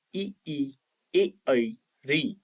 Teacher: जिन स्वरों का उच्चारण करते समय मानव जीवा का अग्रभाग क्रियाशील हो, आगे वाले भाग में कंपन हो, जिसके कारण इन स्वरों को अग्र स्वर कहते हैं।